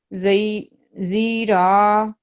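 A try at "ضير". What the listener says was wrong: زیرا نہیں ہے، ضاد کے آگے یا ہے، لین ہے. جی یا لین ہے، ضعیر پڑھیں گے اس کو.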